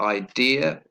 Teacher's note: idea stress on the second syllable